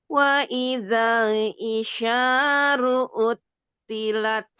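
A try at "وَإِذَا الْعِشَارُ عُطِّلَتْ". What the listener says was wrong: Uti itu huruf to yang tebal. Uti, uti, utilat, utilat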